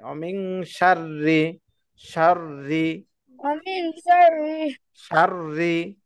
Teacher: রয়ের নিচে যখন রি জের থাকে রি তখন রয়ের উচ্চারণটা পাতলা হয়